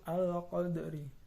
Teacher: Yang keenam qalqalah sughra karena ada huruf dal mati atau sukun di tengah kata. Cara membacanya harus bergerak dan berbunyi seperti memantulkan dalnya